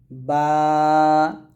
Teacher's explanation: বা টা আমরা দুই ঠোঁটের অংশে মিল করে উচ্চারণ করব অর্থাৎ দুই ঠোঁটের শুকনা অংশ মিল করে আমরা বা উচ্চারণ করব